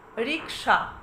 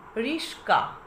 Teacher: সংযুক্ত ব্যঞ্জনে যে ব্যঞ্জনটির পরে যে ব্যঞ্জনটি রয়েছে সেটি না থেকে তারা একে অপরের স্থান পরিবর্তন করছে ফলে এখানে একটি ধ্বনিগত বিপর্যয় শব্দের মধ্যে সৃষ্টি হচ্ছে যে কারণে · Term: ধ্বনি বিপর্যয়